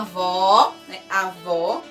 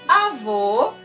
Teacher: avó é um som mais aberto avô é um som mais fechado né avó como Agudo avô com circunflexo tá e na página